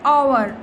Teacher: h is silent Therefore, the word actually begins with an O sound